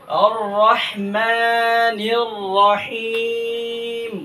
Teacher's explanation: যেমন আর রহমানির রহিম, আর রহমানির, এখানে যে বলটা হয় আর রহমানির রাহিম আমরা পড়ি, আর রহমানির রাহিম পড়বো না, রকে আমরা মোটা করে দিয়ে পড়বো